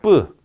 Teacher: 뿌 소리 어떻습니까? 뿌. 역시 무성음이고요. 자, 기식성은 뿌 없죠. 네, 기식성이 없으니까 무기음이고요. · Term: 무성, 무기, 경음